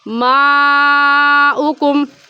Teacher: حروف مدہ اس میں الف مدہ ہے، الف سے پہلے زبر آ جائے تو الف مدہ کہلاتا ہے، تو حروف مدہ کے بعد حمزہ اسی کلمے میں آ گیا، اس وجہ سے اس مد کو کہیں گے مد متصل اور مد واجب، اور اس مد کو 4 الف کے برابر کھینچ کر پڑھیں گے، نہ اس سے کم اور نہ ہی اس سے زیادہ